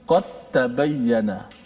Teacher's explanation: dal mati jumpa dengan ta. Okey, itu masuk terus. Masuk terus. Dia bagi idgham kamil, masuk secara total. Semua. Pada segi suara dal dah tak ada.